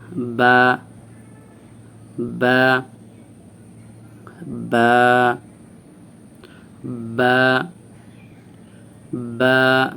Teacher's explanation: স্বাভাবিকভাবে দুই ঠোট একসাথে একসাথে লেগে থাকবে চিবদা ধরে লাগাইতে হবে না স্বাভাবিকভাবে লাগাবেন লাগানো অবস্থায় তখন মুখ